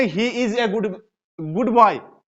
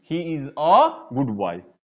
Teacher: अ होती है. जब भी ए किसी वाक्य में अकेले आता है तो उसका उच्चारण हमेशा अ होता है, न कि ए